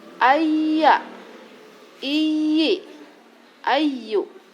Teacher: Huruf ya akan terbentuk dengan cara lidah yang tidak menempel pada langit-langit bersamaan dengan menurunnya pangkal lidah dan naiknya tengah lidah. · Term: makhraj ya